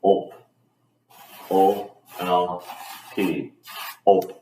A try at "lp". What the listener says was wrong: Okay, so you're adding an extra, you're adding a vowel in there. So op, like gulp.